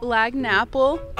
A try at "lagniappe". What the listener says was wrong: Did you say apple? Lagniappe. Lagniappe. Lagniappe? Lagniappe.